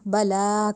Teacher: بلا قد، اب لام کے اوپر کھڑی زبر ہے، کھڑی زبر کو ہم نے لمبا کیا، بلا نہیں کہا، بلا کہا، جب کھڑی زبر آئی تو اس کو الف جتنا لمبا کرنا ہے